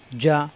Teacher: জিবার মাঝখানে উপরে চাপ দিয়ে